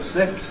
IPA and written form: snɪft (sniffed)